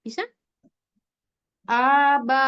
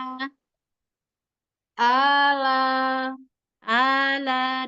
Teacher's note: aba antara a dan ba sama tipisnya